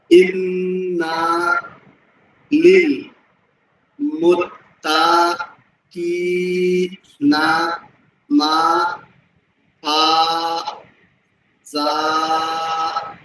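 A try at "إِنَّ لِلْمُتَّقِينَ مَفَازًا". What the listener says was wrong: তবে মুত্তা যেমন এই যে না, এই প্রথমে না টান নাই, একটু টান পড়ছে সামান্য। মুত্তা তা টান নাই, একটু সামান্য টান পড়ছে। এতটুকু যাতে না পড়ে খেয়াল রাখতে হবে। হ্যাঁ, যে এটা টান নাই মোটেও যাতে টান না হয় খেয়াল রাখতে হবে এটা।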